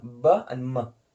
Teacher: meem and baa, the lips join together